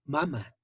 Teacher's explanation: Siguiente fonema tenemos, fonema M, fonema M. Es bilabial, que se pronuncia con los dos labios, labio superior e inferior